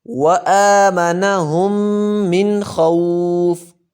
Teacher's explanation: یہاں پہ غنہ نہیں کریں گے, من خوف پڑھیں گے